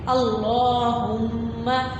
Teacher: لفظ اللہ کے اوپر جب بھی فتحہ یا دمہ، زبر یا پیش آئے تو اسے کیسے پڑھتے ہیں؟ اس لفظ کو بھاری آواز میں پڑھتے ہیں، موٹا کر کے پڑھتے ہیں۔